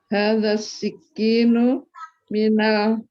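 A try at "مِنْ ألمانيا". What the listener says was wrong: min bukan mina itu ada hamzahnya hamzah qat'iyun min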